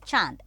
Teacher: हम पढ़ने वाले हैं अब अनुनासिक के बारे में, यानी कि चंद्र बिंदु पर जो चंद्र बिंदु लगता है उसे अनुनासिक कहा जाता है। अनुनासिक का उच्चारण नाक और गले दोनों से किया जाता है।